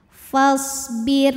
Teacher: huruf ro sukun dibaca secara tarqik karena harakatnya di bawah kasrah harakat sebelumnya ya maksudnya maka dnya tipis pangkal lidah datar lidah nyantai fasbir